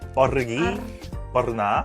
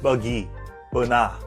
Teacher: Di dalam pendapat saya, Indonesia menekan R sound dan orang Malaysia tidak menekan R sound.